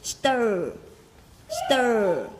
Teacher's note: đọc được nó thì chúng ta phải cong cái lưỡi của mình lên trên